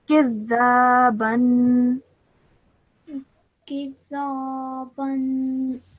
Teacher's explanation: you joined the kaf to the dal with force because of the shadda. You put emphasis on it. · And when you say that, you have to produce a 2-second nasal sound when you say it